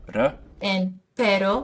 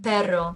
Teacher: Two different R sounds which can change the meaning of a word. One is a tap, r, and pero, the other is a trill, or rolled R in perro. Different word, only one different sound.